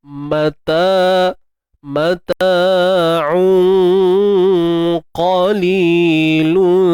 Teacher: Dengung ikhfa ni kena tebal sebab dijumpa tu dengan huruf qaf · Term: ikhfa haqiqi